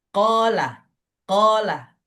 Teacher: Huruf qof keluar dari pangkal lidah terakhir masuk ke alja ke aljau.